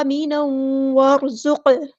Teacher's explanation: बलदन, तनवीन यहाँ पे इज़हार होगा, बलदन आमीना, यहाँ पे हरकत मद आई है, अलिफ के बराबर लंबा करेंगे, तनवीन की आवाज़ को हमें वाव की आवाज़ में मिक्स अप कर देना है।